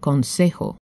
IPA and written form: konˈsexo (consejo)